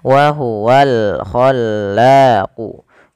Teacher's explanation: alif lam qamariyah yang dibaca dengan jelas suara lamnya · pada lafal la sama ada mad tabi'i sehingga panjang bala dan khallanya harus sama, yaitu 2 harokat ditandai dengan fathah bertemu alif.